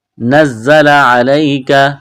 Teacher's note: زا میں سیٹی کی آواز پیدا کریں گے